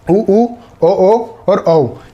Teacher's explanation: तो आप ये बोल के समझ सकते हैं कि उ ओ और औ ये आ रहे हैं हमारे व्रतमुखी में। तो इसमें आपको बोलने से ही लग जाएगा कि आपके होठों का आकार गोलाकार हो रहा है। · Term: व्रतमुखी स्वर